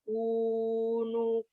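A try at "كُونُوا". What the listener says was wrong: Panjang.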